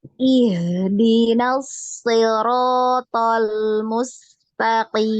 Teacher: Ketika dialirkan, tetap makhrajnya di bawah, tenggorokan bagian bawah, ya. Iya, ya. Jangan naik. · Jadi ketika bertemu dengan huruf H yang disukun, nah jangan lupa untuk dialirkan ya suaranya.